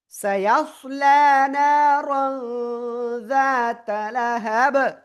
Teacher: থেমে পড়লে কি হবে? বা সাকিন কলকলা হয়ে যাবে